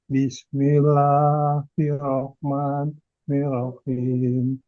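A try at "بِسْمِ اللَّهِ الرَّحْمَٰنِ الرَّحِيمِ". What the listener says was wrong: Double RI. Bismillahirrahmanirrahim. Tekan hir. Bukan hiro. Bismillahirrahmanirrahim.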